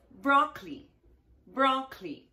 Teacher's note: broccoli only two syllables you have to ignore the letter O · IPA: /ˈbrɒk li/